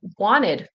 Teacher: The T will kind of disappear.